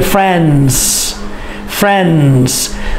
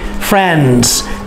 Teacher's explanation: when you add the s you don't need to say the d friends f-r-i-e-n-s is how we say it friends one friend for